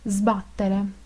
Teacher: la s italiana es Sonora cuando está en unión con consonante Sonora